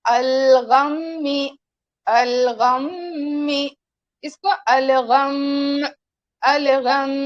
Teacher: اور یہاں پر میم مشدد اور نون مشدد پر غنہ کیا جاتا ہے، لیکن وقت کی حالت میں بھی ہم غنہ کے ساتھ پڑھیں گے